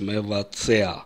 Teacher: По звучанию безударный звук «а» в конце говорит о том, что здесь «айн».